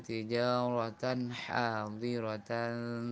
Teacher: Tijaratan hadirah, tanwin bertemu dengan ha, bacaan izhar halqi, dibaca dengan jelas bunyi nunnya, bunyi tanwinnya dengan tanpa kita berlama-lama di tanwin. Hanya kita memenuhi sifat bainiyah pada nun yang ada pada tanwin itu sendiri.